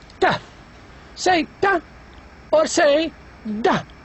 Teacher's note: So if now you press the tip of the tongue against this part, the alveolar ridge, which is found right after the teeth, you can have sounds like ta.